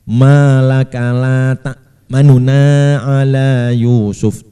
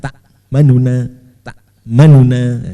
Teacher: membaca dengan cepat dan samar sehingga suaranya tinggal 2/3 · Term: ikhtilas